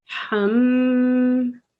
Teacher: It means when you recite this meme mushaddad or a noon mushaddad, you hold the first letter, because there are 2 memes there, and you send the sound into your nose. · it is a ghunna, which means it's a nasalization, and it's not less than 2 seconds